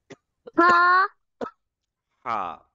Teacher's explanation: Ha comes from the middle throat and it should be as sharp as a knife.